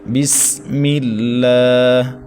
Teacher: سین سیٹی والے حروف میں سے ہے، سختی کے ساتھ سیٹی کے ساؤنڈ نکال کے ہم اس کو پڑھیں گے